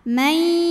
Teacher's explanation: Karena ada nun sukun menghadapi huruf ya. Maka cara bacanya bunyi nunnya masuk ke ya, mai disertai bunyi dengung, tahan. Mai. Nah, di sini disebut dengan idgham bi gunnah yang nakis.